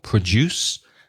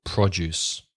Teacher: So the stress changes. The verb has the stress on the second syllable, produce, and the noun on the first syllable, produce.